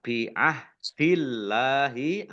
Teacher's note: Allahnya dibaca tipis karena harokat di depannya fathah kasroh. Bi'ahdillahi lam fathah berdiri mat tabi'i panjang 2 harokat.